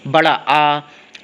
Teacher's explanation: बड़ा आ करते हैं तो जीभ आपकी नीचे भागती है, मुंह खुलता है तो ये विव्रत ध्वनि कहलाती है